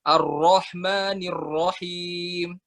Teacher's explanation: Terlalu jelas itu maksudnya banyak kita yang tadi kan mungkin nggak kelihatan mukanya juga, tapi terdengar dari bacaannya ro-nya itu seolah agak-agak membulatkan bibirnya gitu